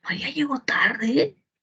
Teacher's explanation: el enunciado que tiene tono final ascendente, donde el último tono está arriba, arriba